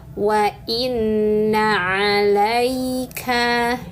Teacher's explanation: Nunnya bertasydid, maka tahan dan dengungkan 3 harokat. Lihat tulisannya gunnah ya.